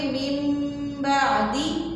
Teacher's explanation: اقلاب نون ساکن یا تنوین کے بعد حرف با آ جائے تو وہاں پر نون کی آواز کو میم میں بدلتے ہیں. با آئے تو نون کی آواز کو میم میں بدل دیتے ہیں · مثلاً اور وہاں پر اکثر قرآن پاک میں چھوٹا سا میم لکھا ہوتا ہے کہ یہاں پر آپ نے نون نہیں پڑھنا، میم پڑھنا ہے. من بعدی تھا اصل میں، ٹھیک ہے.